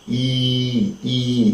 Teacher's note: the front of the tongue is lifted to close a position of the roof of the mouth, right? The tongue, the front of the tongue is lifted and it goes to the roof of the mouth, and we say E.